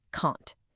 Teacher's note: But the negative can't is strong, long, and stressed